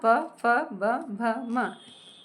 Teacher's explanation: इनका उच्चारण होठ से होता है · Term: प वर्ण